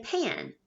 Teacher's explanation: we don't say that word pan we say pan right because the a is changed a little bit by that nasal